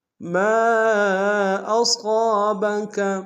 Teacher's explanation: ما کے ساتھ الف مدہ ہے، الف مدہ کے اوپر مد منفصل ہے، کم سے کم 2 سے ڈھائی الف نار میں کھینچے گی۔